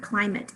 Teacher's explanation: i hear cly i hear that long i sound really careful really clearly so i know that's not a schwa